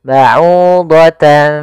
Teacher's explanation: Maka ba'udatan seakan-akan ada ng tapi bukan. Karena dia ikhfa.